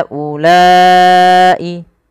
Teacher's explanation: Panjangkan huruf ha sepanjang empat harakat dan panjangkanlah huruf la sepanjang empat harakat pula atau lima harakat untuk kedua-duanya. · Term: mad jaiz munfasil